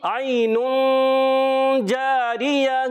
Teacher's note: عین میں پیارے بچوں یا لین ہے، نرمی سے ادا کریں گے، اس کو بہت زیادہ کھینچیں گے نہیں، حرف مدہ کی طرح اس کو کھینچنا نہیں ہوتا، نرمی سے ادا کریں گے۔